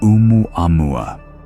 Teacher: The apostrophe at the beginning, called an okina, represents a glottal stop, an important part of the language.